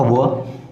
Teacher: दंतोष्ठ है, मतलब दांत और ओठ मिला करके। आप देखो वह नीचे का होठ ऊपर का दांत दोनों मिलता है